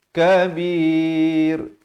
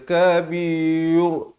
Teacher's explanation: Datang kaf jadi syaikhun kabir. Dan ra di sini jadi diberikan tanda mati mendatang dan dibacakan dengan nipis